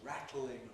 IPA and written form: ˈræt.l̩.ɪŋ (rattling)